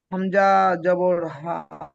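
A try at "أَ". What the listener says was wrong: হামজা বলে টানবেন না, হামজা জবর আ। হামজা কখনো না। হামজা জবর আ। হামজায় টান হয় না, হামজা জবর আ, জি এইভাবে পড়বেন।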